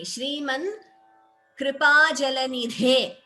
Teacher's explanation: Shriman Kripa Jalanidhe. Dha is Mahaprana.